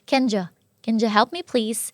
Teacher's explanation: จากUสระอูก็เป็นการไม่stressหรือว่าเสียงชวาตัวอีกลับหัวนะคะ